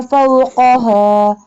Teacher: This one qaf pronounced boldly. This one qaf pronounced by touching the tongue from the soft part of the palate